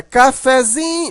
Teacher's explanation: Mas na hora que você transforma essa palavra para cafezinho, você observa que o fé, ele não é tão fraco, mas ele também não é tão forte como o zin. A sílaba mais forte aqui é o zin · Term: sílaba subtônica